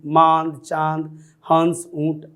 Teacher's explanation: अनुनासिक, इसका उच्चारण नाक और मुंह से होता है